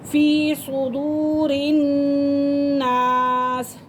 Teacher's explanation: صاد کو پر کر کے پڑھیں گے اور اس را کو باریک پڑھیں گے